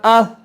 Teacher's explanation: کوئی سیٹی نہیں بج رہی، کوئی سختی نہیں ہو رہی، نرمی سے پڑھے جا رہے ہیں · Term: نرم حروف